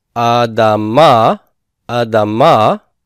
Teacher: It's a hurried pathak sound, or rather a reduced pathak sound. It's a pathak that has reduced to the point where it's no longer pronounced as a full vowel. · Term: katef pathak